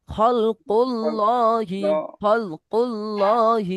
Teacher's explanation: খয়েন আছে সরি খলকুল্লাহি খলকুল্লাহ, খলকুল্লাহি লহি একটু টান দেবেন, খলকুল্লাহি লতে একটু টান দেবেন, কারণ কি বলেন তো খারা জবর আছে, খারা জবরকে একালি পরিমাণ টান দিয়ে পড়বেন